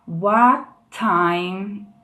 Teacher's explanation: eu vou me preparar como se eu fosse falar o T. Só que eu não vou soltar o ar, eu vou soltar o ar só na segunda palavra. Então eu vou fazer assim, what time, né? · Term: conexão